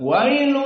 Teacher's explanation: seperti di ayat ini ada dua Idam wailu maka di sini dua harakat dan makhrajnya dari hidung wa syahidnya wa masuk hidung wa di sini dua harakat wail